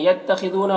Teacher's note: خاء کو پر پڑھیں گے، حروف مستعلیہ میں سے ہے، ذو میں واو مدہ ہے، اسے ایک الف کے برابر کھینچیں گے۔